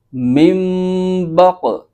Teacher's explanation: نون ساکن کی جو آواز ہے وہ میم میں بدل جائے گی اور اخفا بھی ہوگا، یعنی غنہ کر کے پڑھیں گے۔ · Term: اقلاب